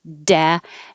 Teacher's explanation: And both times the D is a real D. D, pushing the airflow, holding it with a lot of pressure